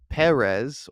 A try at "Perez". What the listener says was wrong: It sounds like Paris, but it's Perez.